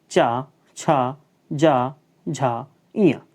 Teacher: इनका उच्चारण स्थान जो है वह क्या है? तालु है। तालु मतलब हमारा जबड़े का ऊपरी वाला भाग।